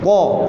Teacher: ini istilah ta ni iaitu itbaq, kena tebalkan huruf ta ni sebutan dia. Fa ahbata, moncong sikit.